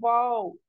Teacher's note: जो लिप्स है वो गोल हो जाएगा बट मिलेगा नहीं